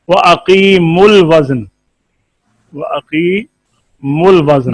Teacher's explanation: واقیم الوزن کو ملا کر پڑھیں تو واو پڑھا نہیں جاتا. اور اگر اقیمو پر وقف کریں تو پھر وقف تابع رسم الخط کے.